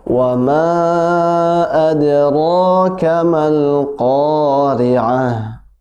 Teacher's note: Wama panjang 4 atau 5 harokat, ya, mad jaiz munfasil